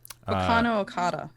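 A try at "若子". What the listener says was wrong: There's no N in it.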